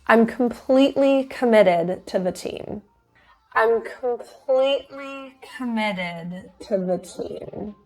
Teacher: it's a flap T those teas are surrounded by vowels and it's in an unstressed syllable so committed is with a D sound